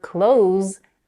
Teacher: the verb close ends with a voiced consonant Z